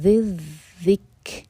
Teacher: اس کے بعد ذی ذکری، ذیل ہیں دونوں، یہاں پہ زا کا ساؤنڈ بالکل نہ آئے، ذیل کو ذیل سے جوڑیں گے